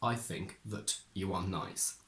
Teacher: the first that is a conjunction, therefore it goes weak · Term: weak form